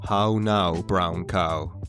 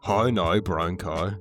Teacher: the sound you're used to hearing becomes the rare O sound in Northern Ireland.